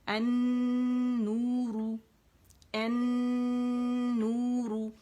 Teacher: نون مشدد ہے نا، تو یہاں پہ اکمل غنہ ہوگا، اور النور، النور نہیں ہے، یہ کیا ہے، النور، ٹھیک ہے، کیونکہ یہ شمسی حرف ہے، اس نے اپنے سے پہلے لام تعریف کو مرج کر لیا، ٹھیک ہے، تو یہ لام خالی ہو گیا تو نون پڑھا جائے گا، ٹھیک ہے۔